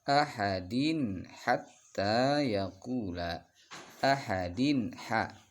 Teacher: Nah, itu hukumnya izhar ya, dibaca jelas tanwin kasrah bertemu ha